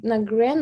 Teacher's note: Здесь «ди» можно даже не произносить. Избегаем этого. На «грэн» можно остановиться.